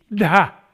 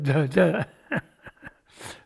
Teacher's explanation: They have a different consonant in Sanskrit, of aspirated D, dha. So dhr, like that.